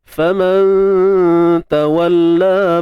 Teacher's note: Nun mati bertemu huruf ta. Jadi ikhfa maknanya kita kena sembunyikan sebutan nun mati apabila bertemu dengan huruf ta. Dan dengung di sini kita buat nipis je, tuan-puan. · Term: ikhfa haqiqi